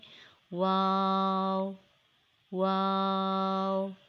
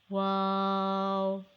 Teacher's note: wow is a light sound and long letter it is pronounced by rounding both lips and not closing the mouth